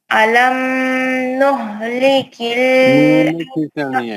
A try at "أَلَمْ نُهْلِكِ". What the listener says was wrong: میم میں کھینچنا نہیں ہے, میم میں بالکل بھی کھینچنا نہیں, اس میں بھی اظہار شفی ہے. علم بس عالم, پھر اس میں بالکل بھی اخفا نہیں کرنا, نہ گناہ کرنا ہے.